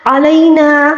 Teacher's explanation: عین کو حلق کے درمیانی حصے سے ادا کریں گے، اور لینا یا لین ہے یہاں پر، یا ساکن سے پہلے والے حرف یعنی لام کے اوپر زبر ہے، اس کو یا لین کہا جاتا ہے، اس کو نرمی سے پڑھیں گے، ٹھیک ہے۔